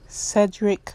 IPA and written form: ˈsɛdɾik (Cédric)